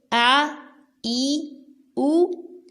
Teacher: حمزہ کو حلق کے آخری حصے سے ادا کریں